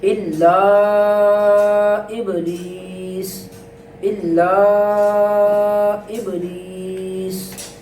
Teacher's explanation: جب وقف کریں گے تو سین کے اوپر سے حرکت جو ہے وہ ختم ہو جائے گی